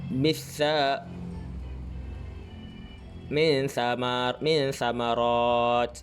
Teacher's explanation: kita akan hilangkan sembunyikan nun tu, tapi kita akan dengungkan sikit dan sambungkan dan masukkan dan terus ke bunyi sam.